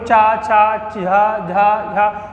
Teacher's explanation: चा वर्ग का उच्चारण स्थान होता है तालव्य से या तालु से। ठीक है, तालु का मतलब क्या होता है, जैसे मान लीजिए आप चा, छा, जा, झा अगर यहाँ का उच्चारण कर रहे हैं तो जीभ ऊपर तालु पे टच होगी।